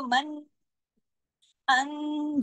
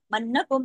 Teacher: नून पे गुन्ने की वजह से अकमल गुन्ना हो रहा है। यहां नून क्योंकि मुशद्द है दो नून है।